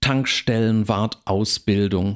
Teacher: es ist immer noch Tank betont der Akzent bleibt auf dem Erstglied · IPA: /tăŋkʃtɛlənvaʁtăʊsbɪldʊŋ/